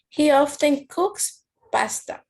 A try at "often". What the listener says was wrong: With this one, be careful with the pronunciation because it's not often. We don't pronounce letter T. You only say often, like this. Often.